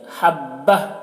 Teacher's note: یہاں پر وقف کر رہے ہیں تو یہ گول تا ہائے ساکنہ سے بدل جائے گی، حبہ ایسے پڑھیں گے۔